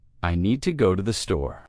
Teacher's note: Make need and store strong and let to thee be quick and light.